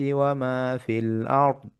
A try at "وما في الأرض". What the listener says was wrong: আরো মোটা দাও, ওয়ামা ফিল আরদি, দত কিন্তু ছাড়বেন না, ঠিক আছে? 1 সেকেন্ড 2 সেকেন্ড ধরে রাখবেন আর আওয়াজটা চলবে।